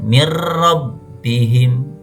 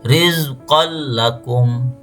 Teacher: Jadi hukum bacanya disebut idgham bila gunnah apabila ada nun sukun atau tanwin bertemu dengan dua huruf lam dan huruf ra. Cara membacanya yaitu dengan mengidghamkan nun atau tanwin pada lam dan ra tetapi tanpa dengung.